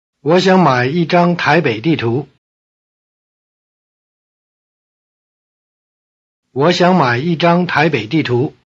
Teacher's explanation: Notice that the low tones of 我 and 想 change to rising tone before the low tone of 买